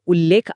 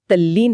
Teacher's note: त स्वतःला पूर्णपणे पुसून टाकून ल मध्ये कसा विरघळून जातो हे यातून दिसते.